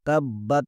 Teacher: تبت یہاں بھی با مشدد ہے، لیکن یہ با ساکن نہیں ہے، نہ ہی اس کے آگے وقف ہے، اس لیے یہاں قلقلہ نہیں ہوگا